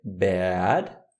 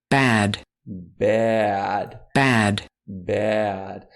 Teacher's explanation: Note que começa meio que num E e desce para o A.